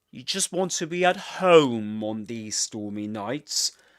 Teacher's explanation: the voice goes up here on home